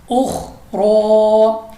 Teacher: रा पर खड़ा ज़बर है इसलिए हमने इसको रा को मोटा पढ़ा है और खा भी मुस्तालिया है, इसको भी मोटा पढ़ा है, उख रा।